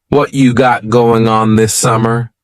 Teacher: What cha is what plus you. You becomes cha.